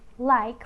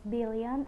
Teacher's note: Alright, now we're going to the lateral sound, which has one sound, which is L. L is voiced alveolar lateral